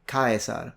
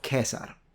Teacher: use a more simplified pronunciation specifically when it comes to the eye diphthong